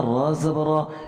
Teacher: یہاں را کو ہم موٹا پڑھیں گے چونکہ اس کے اوپر زبر ہے